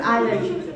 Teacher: when you say island, you don't pronounce the S. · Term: silent sounds